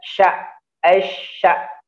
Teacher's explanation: memang dia tengah lidahnya ya ke atas namun tidak menempel.